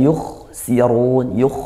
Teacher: kha sukun ya, dialirkan suaranya, desis juga dia. Sirun, sinya tipiskan, kha-nya tebal, si tipis, run, ra-nya tafkhim karena dia berharokat dhammah.